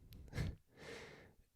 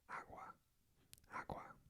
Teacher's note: kind of pronounced like a W while trying to say G